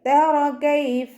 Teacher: റോ ഫത്ഹ ആയതുകൊണ്ട് ഉയർത്തിയിട്ട് ഉച്ചരിക്കുക.